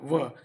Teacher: दांत और ओठ मिला के व बन रहा है, दंतोष्ठ व।